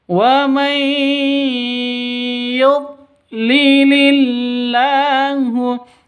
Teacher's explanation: Wa may yud, nun mati bertemu dengan ya. Cara bacanya masuk ke ya disertai dengung 2 ketukan karena idgham bi gunnah.